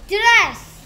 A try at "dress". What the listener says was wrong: 드, 드리스 같은데? 에지, 에. 이, 이는 뭐?